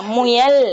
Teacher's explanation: இது உகரம் இதல் குவித்து உச்சரிக்கப்படுது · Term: முற்றியல் உகரம்